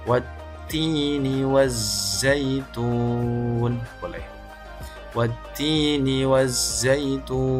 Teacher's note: Karena ada huruf mad yaitu berupa ta dhammah kemudian diikuti dengan wawu sukun, dia berada di huruf yang diwakafkan ni, maka dia disebut sebagai mad arid lissukun. Zaituni membacanya adalah dengan 2-6 harokat.